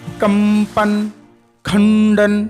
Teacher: अनुस्वार पूर्ण अनुनासिक नोजल साउंड है